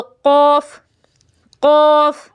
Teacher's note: तो ज़ुबान की जड़ और तालु के नर्म हिस्से से अदा होता है ये जो काफ है